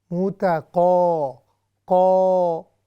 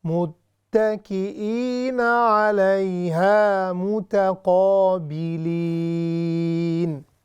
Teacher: یہ صرف قاف جو ہے وہ ہیوی ہے، اس کے علاوہ ہیوی الفاظ نہیں